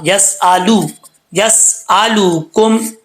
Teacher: लाम पेश लू होता है, लो नहीं होता